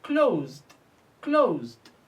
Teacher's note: Although it's written s, but we pronounce it z.